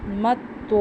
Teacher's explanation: تو کو ہم موٹا پڑھیں گے اور چونکہ آگے الف آ رہا ہے، زبر کے بعد الف آ رہا ہے تو اس کو 1 الف کے برابر لمبا کریں گے